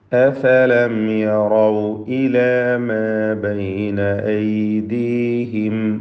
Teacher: അഫലം യറൗ എന്ന് പറയുമ്പോൾ സക്കിന മീമിന് ഇൽഹാർ ഷഫവി നൽകി മണിക്കാതെ വെളിവാക്കേണ്ടതാണ്. യറൗ എന്നതിലെ റായിനെ തഫ്ഖീം ചെയ്ത് ഉച്ചരിക്കണം. ഇവിടെ യറൗ എന്നതിലെ റായിനെ തഫ്ഖീം ചെയ്യണം.